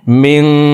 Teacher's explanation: পরে ইকফার 15টি হরফের ভিতরে একটি হরফ কাফ আসছে, এই কারণে এই নুন সাকিনকে নাকের ভিতরে লুকাইয়া গুন্নার সহিত পড়তে হবে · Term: ইকফা গুন্না